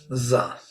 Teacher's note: It's a fricative, but it is voiced fricative.